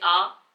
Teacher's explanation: विव्रत में आपका मुंह पूरी तरीके से खुल जाए, जैसे आ